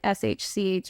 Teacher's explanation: it sounds like SHCH where the air is escaping over the sides, like a lateral lisp